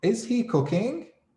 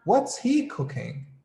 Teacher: go up with my voice i say is he cooking right but if i say what's he cooking i go down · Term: intonation